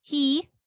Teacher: So we prolong the E sound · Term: long E